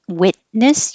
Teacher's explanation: you won't hear the T your tongue will go to the T position